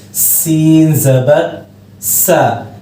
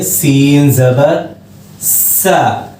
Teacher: बारीक आवाज में सीटी के साथ पढ़ेंगे